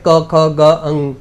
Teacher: એને કંઠ્ય કહેવાય તો એ કંઠમાંથી નીકળે છે